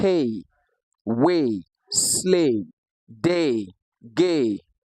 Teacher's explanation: The fourth diphthong we have here is a combination of the short a and the short e